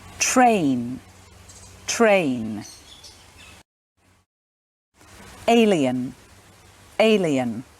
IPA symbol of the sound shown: eɪ